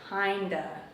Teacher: kind of is often shortened and the sounds link together